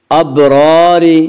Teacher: را کے نیچے زیر سے را کو باریک پڑھیں گے